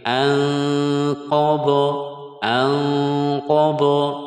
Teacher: nun sukun bertemu qof ikhfa Hakiki lagi